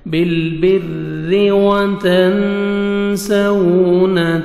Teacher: آگے واو لین ہے، واو پہ لپس کو راؤنڈ میں لے کے جائیں گے، نرمی سے ادا کریں گے۔